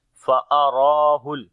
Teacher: Ra we long due to standing fatha on it, and also we read in heavy sound.